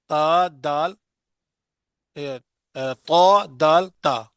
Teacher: जबान की नोक की पुश्त कहां लगे ऊपर वाले दो दांत सना औलिया की जड़ को लगे तब ये तीरदा हर्फ अदा होते हैं